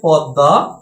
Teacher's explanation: এই ত বর্গীয় ধ্বনির সাথে যখন ম ফলা থাকবে, তখন এই ম ফলাটার পরিবর্তে ত বর্গীয় ধ্বনিটাই দ্বিত্ব উচ্চারিত হবে। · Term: দ্বিত্ব উচ্চারণ